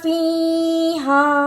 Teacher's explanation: فی ہا زبر ہا، ہا کے ساتھ الف مدہ اور چھوٹی مد ہے، اس لیے اس کو لمبا کرنا ہے